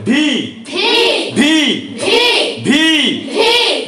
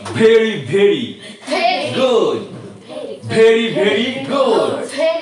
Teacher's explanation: ভি কে পড়ার জন্য আমাদের উপরের দাঁত নিচের ঠোঁটের সাথে মিলিয়ে পড়তে হবে। ভি, উপরের দাঁত ধরে নিচের ঠোঁটের উপর পড়ে।